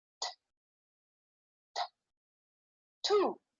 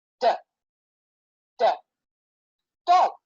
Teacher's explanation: only difference is one is unvoiced and one is voiced. And that goes for each pair that you see.